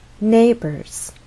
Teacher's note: now our voice must go up before it goes down so we'll rise on the stress syllable and then step down to a lower pitch · our final content word is neighbors stress on the first syllable now our voice must go up before it goes down so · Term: falling intonation